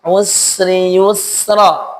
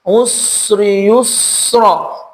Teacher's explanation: Makhrajnya sama, lahir dari tempat yang sama, posisinya juga sama. Yang membedakan adalah sin tipis, shad tebal.